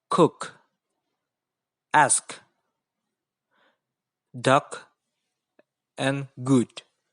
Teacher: interrupted by touching the back of the tongue to the velum, the soft part of the roof of the mouth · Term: lingua velar plosives